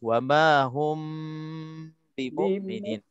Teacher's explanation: Mim mati bertemu dengan huruf ba, hukum dia ikhfa syafawi dengan 2 harakat.